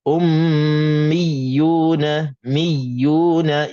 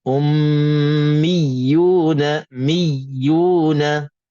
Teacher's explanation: ya itu ada sabdu dan kita kena tekankan ya al-musyaddadah supaya kita keluarkan dan kita sebut kedua-dua huruf